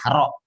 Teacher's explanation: Ro itu pertengahan antara syiddah dan rokhawah. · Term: sifat tawasud